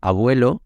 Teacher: nuestro aproximante para la b no Entonces cuando decimos eh abuelo no estamos juntando los labios no se están tocando están muy cerquita pero no se están tocando